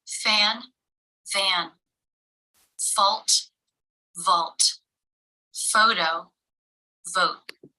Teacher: drawn in the soft palate is raised for these consonant sounds the bottom lip simply raises to touch the top teeth